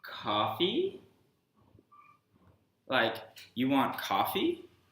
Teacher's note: this flat tone coffee in English it communicates a statement but if you communicate it with this rising tone coffee like you want coffee you communicate a question